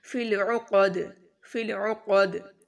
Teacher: قاف موٹا، عین کی آواز اچھے سے ادا کریں اور دال پر قلقلہ ہوگا.